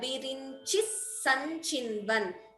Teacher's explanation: Sa and sa, two sas are there. So both have to be heard.